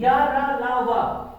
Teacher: जब आप ये जितने हैं इसमें जीभ टच हो, ये इसमें जीभ टच नहीं होती, स्वर में जीभ टच नहीं होती, या रा ला वा इसमें जीभ टच जैसी होती है, टच कर भी रही है और नहीं भी कर रही है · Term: सेमी वॉवेल्स